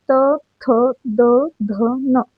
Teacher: त, थ, द, ध, न याचा उच्चार करताना आपली जीभ आपल्या दाताला घर्षण करते, त्यामुळे हे दंत्य वर्गामधील आहेत